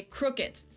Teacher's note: Germans usually pronounce a d at the end of a word as a t